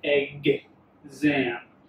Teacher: there are very few instances in which x is voiced like egg zam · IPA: /gz/